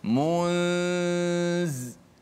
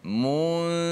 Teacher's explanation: menyembunyikan nun itu, nun mati itu di sisi huruf zai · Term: ikhfa